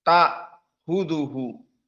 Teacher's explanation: Hamzahnya dihilangkan menjadi ta huduhu. Diganti dengan alif